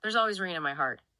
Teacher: You have the sound in theirs linking immediately to a vowel in always, followed by an R in rain.